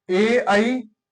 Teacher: और ए, आई, ये तालु कंठी है। तालु और कंठ दोनों के प्रयत्न से बोले जाते हैं, तो ये तालु कंठी हो गए।